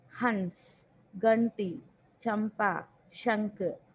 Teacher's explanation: अनुनासिक व्यंजन का मात्रा रूप है। इसे बोलते समय प्रश्वास वायु नाक से बाहर आता है। नाक से नेसल साउंड आता है। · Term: अनुस्वार